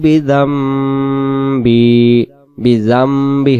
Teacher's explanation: যদি নুন সাকিনের পরের অক্ষরটা বা অক্ষর পাওয়া যায় সেখানে নুন সাকিনটাকে মিম ধরে উচ্চারণ করতে হয়